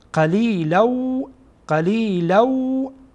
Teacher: قلیلو قلیلو به این شکل خوانده میشه همراه غنه که صدا را از خیشوم یا استخوان بینی بیرون میکنیم.